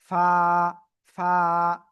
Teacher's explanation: নিচের ঠোটের পেট উপরের দুই দাতের আগার সাথে লাগাবো লাগিয়ে হালকা বাতাস বের করব